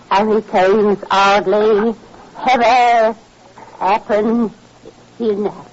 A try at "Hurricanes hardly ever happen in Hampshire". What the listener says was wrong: Now, if you drop that H again, you should be dragged around the room three times by the hair